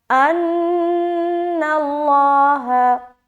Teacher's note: اس کے بعد ان اللہ، ان، نون مشدد کا غنہ، اللہ، لفظ اللہ کا لام کو موٹا کیونکہ نون کے اوپر زبر آ گیا